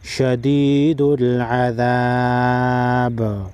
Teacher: وقف کی صورت میں با ساکن پر قلقلہ کریں گے